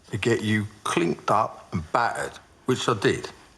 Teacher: Listen to how he doesn't say the T